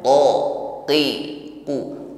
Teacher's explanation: Sifatnya syiddah liquwwatil i'timadi fil makhraj, kuat tekanan huruf ketika mengucapkannya, maka jangan diucapkan dengan lemah.